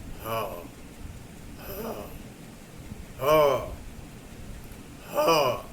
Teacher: गले के भीतर स्वर यंत्र के मुख से उच्चरित होती है